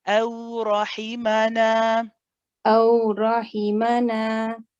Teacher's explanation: don't forget the fatha a sound before the waw.